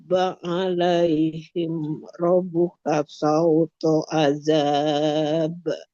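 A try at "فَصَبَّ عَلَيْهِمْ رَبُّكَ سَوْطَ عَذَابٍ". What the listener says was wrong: Double B-nya, ba tasydidnya yang buru-buru. Fasabba sama kayak sabba.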